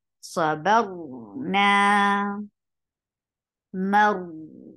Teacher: You are lifting the root of your tongue towards your palate to make ra heavy. Maru, and you are giving tawassut.